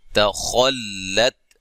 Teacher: اب یہاں صرف یہ خا موٹا حرف ہے، باقی سب باریک ہے